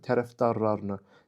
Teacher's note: Tərəfdarlarını, fikir versəz, l samiti d ilə əvəz olundu.